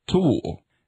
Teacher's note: The heavily aspirated alveolar stop, T. as in English tool, is formed by engrafting the extra stroke on top of the grapheme.